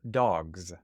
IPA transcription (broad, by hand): dɑgz